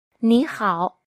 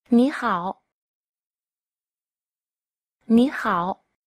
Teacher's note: Trong tiếng Trung hai thanh ba đi liền nhau, thanh ở trước sẽ đọc thành thanh hai. Ví dụ trong trường hợp này, từ nỉ và từ khẩu đọc thành ní khẩu.